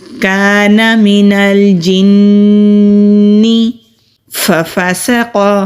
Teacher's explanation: سین سیٹی والے حروف میں سے ہے تو ہلکی سی سیٹی کی آواز آئے گی. قوف مستعلیہ حروف میں سے ہے، موٹا کریں گے.